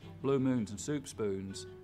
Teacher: When I cross the Mississippi, I don't have very fronted goose vowels anymore, but by the time I'm in Texas, blue moons and soup spoons, it's not coming forward hardly at all now.